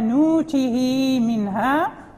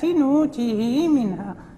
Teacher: فهناك حركتان فقط للصلة